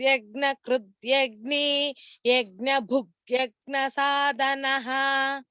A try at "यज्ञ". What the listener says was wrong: भगिनी எனக்கு யக்ஞான்னு கேக்குது, அது வந்து யக்ஞ யக்ஞ அதேதான் எல்லா யக்ஞுக்கும் வரணும்.